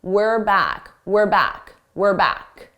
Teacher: notice how unstressed my pronunciation is. It sounds like were. Not we're.